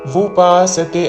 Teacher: ఉపాసతే అని ఊతో పలకకూడదు